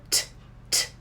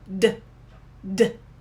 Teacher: So for D, that's the voiced sound. So we vibrate and we say D, D. It's the same shape, it's the same motion of the mouth, but you're vibrating D, D.